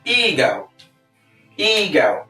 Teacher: the stress is on the first syllable eag EO now often times people pronounce this word mispronounce this